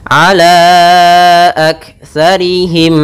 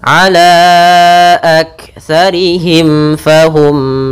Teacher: mati bertemu dengan la kedua-duanya kita namakan dengan izhar syafawi yaitu suara mimnya harus jelas jangan ditahan gunahnya